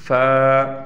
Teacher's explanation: दान लगेंगे उससे अदा होगा फ अब अदा करके देखें फ ऊपर के दो दांत नीचे के होठों पर लगाने से फा अदा होगा